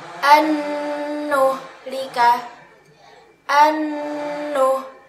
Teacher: Di sini ada nun sukun bertemu dengan huruf nun. Maka nun sukun dimasukkan ke dalam huruf nun dan disertai dengan dengungan 1 alif atau 2 harokat. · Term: idgham bi gunnah